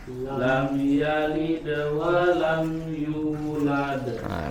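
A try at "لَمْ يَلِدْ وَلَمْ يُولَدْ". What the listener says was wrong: Baik.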